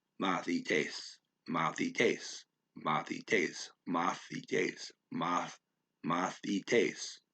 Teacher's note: So I got to say moth, but not stress that syllable because it's not stressed.